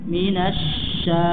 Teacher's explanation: Dan shin enggak boleh masuk hidung. Minasya di sempurna di lidah.